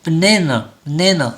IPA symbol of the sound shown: ə